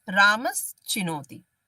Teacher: रामस चिनोति में यहाँ पर सकार का चकार के साथ जो है वो संयोग है और ये संधि कहती है कि जब शकार और चवर्ग के साथ सकार और तवर्ग का योग हो तो यहाँ पर सकार के साथ चवर्ग का योग है, इस वजह से स के स्थान पर श आदेश हो जाता है। इस स के स्थान पर ये श आदेश होता है और तवर्ग के स्थान पर चवर्ग आदेश होता है